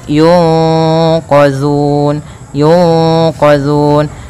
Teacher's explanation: Nah, di sini ada nun mati bertemu dengan huruf qaf, yang mana qaf termasuk daripada bacaan ikhfa. Cara membacanya yaitu suara nunnya disamarkan kepada huruf qaf. Yunqa ditahan, kemudian langkah selanjutnya ditahan gunnahnya.